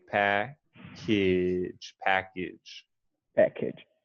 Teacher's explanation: the second A sounds more like an I, like a schwa, like package, package.